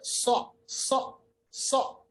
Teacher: सीन और साद की आवाज को आपको फर्क करना है, और वो फर्क कैसे होगी, जब आप साद की आवाज को मोटा पढ़ेंगे